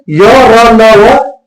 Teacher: य र ल व इसमें कम वायु निकलती है मुंह से या अल्पप्राण है